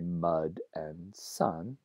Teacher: So we say mud and sun with a mid-central vowel. That's represented by the wedge symbol.